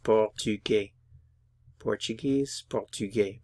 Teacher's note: notice I'm not pronouncing the S